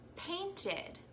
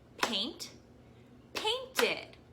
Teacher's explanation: In a word like painted, ed is actually making another syllable.